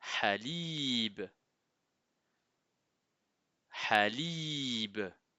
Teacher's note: Ha fait un son un peu particulier en arabe car il n'y a pas d'équivalent en français. C'est un H expiré qui vient de la gorge comme si vous souffliez sur une vitre pour faire de la buée. Donc dites après moi Halib habe qui veut dire lait le lait tout simplement.